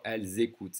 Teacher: I'm connecting the silent S, I'm connecting it to the next vowel sound